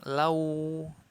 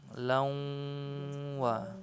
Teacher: tidak sempurna lewat mulut semua tapi harus ada suara yang keluar lewat hidung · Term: ghunnah